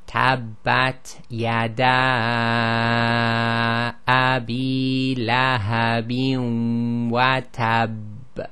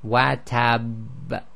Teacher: Okay, so what happened is, just normally as we do with all letters with the shadda, you have to hold it for about 1.5 counts. So we do the tab, hold for 1.5 counts, and then do the release, which causes the echo.